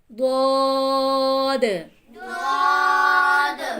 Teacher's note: साइडों वाला जुबान का जो पार्ट है, साइडों वाला जुबान का जो किनारा है, ऊपर वाली दाढ़ों से लगा रहे, ऊपर दाढ़ों से ऐसे नौकरी लगनी चाहिए।